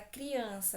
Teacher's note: A palavra criança, também nasal, eu tenho primeiro a semivogal I, depois a vogal A.